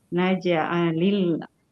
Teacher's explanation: untuk jim qalqalah sughra itu memantulnya ke huruf e naj'alil gitu.